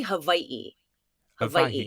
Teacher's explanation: it's actually hawaii hawaii is like yeah hawaii but um because there's like a little thing glottal stop we call it okina between the two eyes so yeah nobody else does it correctly